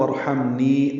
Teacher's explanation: میم ساکن ہے، اس پہ اظہار ہے، نی یا مدہ ہے، 2 حرکات لمبا کرنا ہے